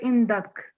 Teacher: So when we're doing a pause, we just say indak. Okay. So the kaf will have sukoon, not fatha.